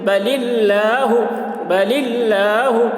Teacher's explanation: اللہ کے لام سے پہلے زیر ہے، اس لیے اللہ کے لام کو باریک پڑھیں گے